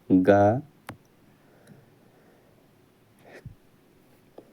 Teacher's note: कंठ अल्प प्राण व्यंजन वर्ण का उदाहरण है।